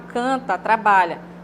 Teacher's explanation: Nós temos aí, omitir fonemas, quando na palavra cantar, e no caso o verbo está no infinitivo, né? E aí a gente quase não ouve o som do AR no final